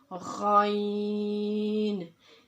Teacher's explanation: इसका मखरज इब्तिदाई हलक यानी कि हलक का वो हिस्सा जो मुंह की तरफ है, यहाँ से गाइन अदा होगा।